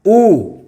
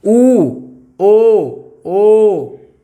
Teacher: वृत्ताकार और आवृत्ताकार, यानी कि ऐसे स्वर जिनको बोलने में हमारा मुंह कैसे हो जाए? वृत्त की तरह बन जाए, सर्किल, सर्किल ऐसे होता है ना, गोल।